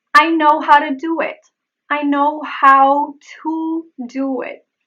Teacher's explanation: you can use the flap T for pronouncing the to sound, as in TO for the infinitive.